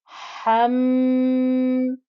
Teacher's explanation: Now the ha here, now this is the very breathy one, that breath comes from the place of the ha is from the middle of the throat, and it's joining to this meme. The meme has a shadda, which means that you need to hold the ghunna. Before you do anything, you hold the ghunna.